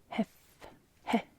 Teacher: that's our he sound because that's our e with an aspiration